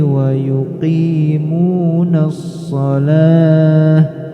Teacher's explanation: Tak marbutoh, jika waqaf maka cara bacanya berubah menjadi huruf H, tidak dibaca huruf ta